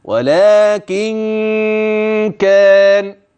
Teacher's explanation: يبقى الغنة بين لكن وبين كلمة كان، ليست قبل ولا بعد